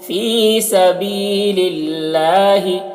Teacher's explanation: اللہ کا لام سے پہلے زیر ہے، اللہ کے لام کو باریک پڑھیں گے